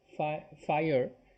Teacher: it's kind of halfway between two syllables and one syllable